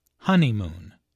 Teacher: There are 3 syllables in honeymoon, with a stress on the first syllable